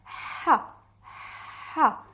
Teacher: it is coming from the top of your throat, and it is like you are shocked with something and you want to take it out of your throat, and you will say so it is coming from this area.